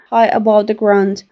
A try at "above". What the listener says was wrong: The V at the end, it wasn't pronounced very clearly. I knew what she was saying, but I think the V could have been pronounced a little better. Just make sure your teeth are on your lower lip and it vibrates. Above, above. High above the ground.